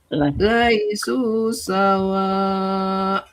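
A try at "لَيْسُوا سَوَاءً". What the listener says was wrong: Nah, ada a-nya Bu. Sawa a karena tanwin fathah ujungnya.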